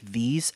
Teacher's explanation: if you're making a long sound with your throat not your nose where tongue touches your teeth that causes vibrations in your throat that's a voiced dental fricative